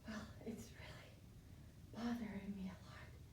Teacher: your voice is breathy a lot of air escaping